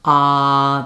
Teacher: When I say ah, there's a lot more space in my mouth. My tongue is down, ah, there's air resonating.